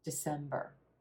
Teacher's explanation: that final syllable is a very quick and quiet or sound